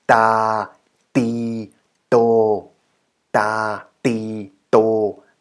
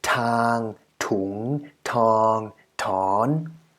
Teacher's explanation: unaspirated. No air released after the t.